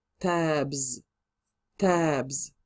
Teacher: So when the word finishes in the letter that is voiced, we add s to make plural. But this s pronunciation will change into a z